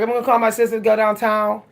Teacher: an original Pittsburgh accent, everything is slurred together. The last sounds of the words are gone. The consonants aren't really pronounced. Okay? Consonants, if they're pronounced, are swapped, like D's or T's.